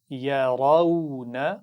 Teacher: اس میں را پر زبر ہے تو اس کو موٹا پڑھنا ہے